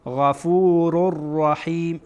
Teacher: اینجا میبینید که را منون تنوین داره و بعد از تنوین رای دیگه آمده. را از حروف یرمولونه، از حروف ادغامه. بنابراین ما این دوتا را با همدیگر داخل میکنیم، ادغام میکنیم